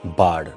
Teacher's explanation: The vowel represented by the letters R is produced with the mouth wide open and the tongue low in the mouth. The air passage is unobstructed and the air passes into the atmosphere outside without any friction.